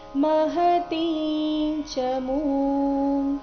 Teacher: ಇಲ್ಲಿ ಮಹತಿ ನಲ್ಲಿಯ ತಿ ದೀರ್ಘ ಬರಬೇಕು